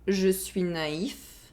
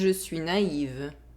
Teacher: There is a difference in consonant sound. There is the [f] sound in the first sentence, and the [v] sound in the second sentence.